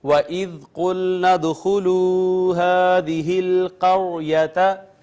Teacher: ناظرین دیکھیں قاف حروف مستعلیہ میں سے پر کر کے پڑھنا ہے، دال ساکن آئی ہے، اس پہ قلقلہ کرنا ہے، یہ واو مدہ، یہ الف المدیہ الصغیرہ، اور را کا ما قبل مفتوح ہے، خود ساکن ہے را، یہاں را کو مفخم یعنی پر کر کے پڑھیں گے۔